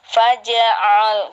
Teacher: Kalau ain berharokat, jangan larinya jangan lari ke hamzah ya Bu. Langsung aja ditekan, ada penekanan sedikit.